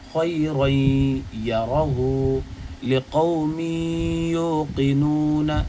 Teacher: اب دیکھیے گا یہاں پر ادغام ہو رہا ہے غنہ کے ساتھ میں، خی رئی یرہو لقوم یوقنون، غنہ بھی ہو رہا ہے، آواز ناک میں جا رہی ہے اور ایک الف کے برابر اس کو روک کر کے بھی کھینچ کر پڑھا جا رہا ہے